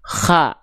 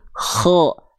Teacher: Jadi huruf kho itu termasuk ke dalam huruf yang tebal teman-teman sekalian. Makanya ketika kho berharokat baris atas, vokalnya bukan a kan, bukan kha, tapi kho